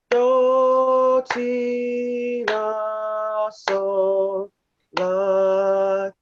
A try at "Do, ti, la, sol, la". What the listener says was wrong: So right there. Do, ti, la, sol. Gotta go back up. La. Try it again.